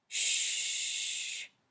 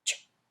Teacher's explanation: When you say shh, you can continue to make the sound for a long time.